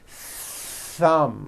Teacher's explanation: You must stretch out the th sound and hear the air friction. Thumb. Like that.